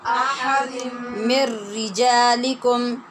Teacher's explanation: تنوین کے بعد میم ہے، ادغام یرمالون غنے کے ساتھ ہو رہا ہے